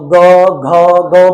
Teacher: अब ग बोलो तो गले में वाइब्रेशन होगी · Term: सघोष